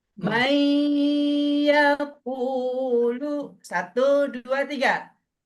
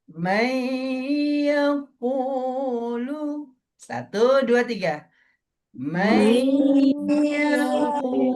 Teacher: ketika idgham bi gunnahnya ditahan, dimasukin dan didengungkan. Idgham artinya Masuk.